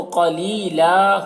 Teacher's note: وقف کریں گے تو یہ دو زبر پر جب وقف ہوتا ہے تو ایک زبر کے ساتھ الف پڑھا جاتا ہے تو قلیلا ہو جائے گا.